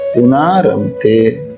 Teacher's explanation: विसर्ग का हो जाएगा लोप और जो न में अ है उसके स्थान पे हो जाएगा आ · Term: विसर्ग का लोप